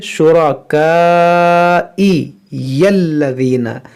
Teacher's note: यहाँ पर देखें शुरा, ये शीन को नरमी से अदा करेंगे, शू, रा को पुर पढ़ेंगे